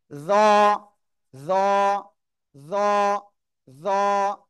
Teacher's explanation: জিহ্বার আগা, উপরে দুই দাঁতের আগায় লাগাবো, লাগিয়ে মোটা আওয়াজে একালিপ টেনে উচ্চারণ করব।